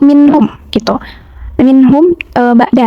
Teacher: Nah, minhum ini tajwidnya izhar halki, nun sukun bertemu ha, dibacanya jelas tanpa dengung pada nun sukunnya.